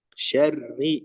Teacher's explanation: Salah satunya yaitu 2 getaran. Ya, takrir itu getaran, memiliki 2 getaran.